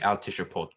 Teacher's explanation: I believe it should be al tishupot. I had said it as a silent shiva, but I believe it should be vocal there.